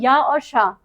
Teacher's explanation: तालव्य श। इसका उच्चारण भी तालु से ही होता है।